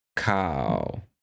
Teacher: cow that means white if I say cow with that that tone falling gradually over time